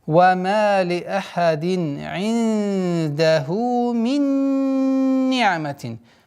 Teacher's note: правило идгам, полная ассимиляция с полноценным назализацией.